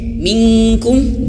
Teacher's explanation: Suaranya ada dua pendapat ya. Nun mati bertemu kaf ini boleh ke eng, minkum, boleh juga tidak ke eng, minkum boleh.